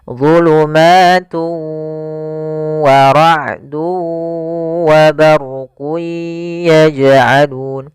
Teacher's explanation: Nah, di sini lafal tu ada tanwin dhammatain, di sini dia warna abu-abu bertemu dengan waw, artinya dia dimasukkan, diidghamkan, maka dinamakan dengan idgham bi gunnah atau idgham ma'al gunnah. Nah, yaitu idgham yang dia cara membacanya tanwinnya dimasukkan ke huruf waw dan ditahan gunnahnya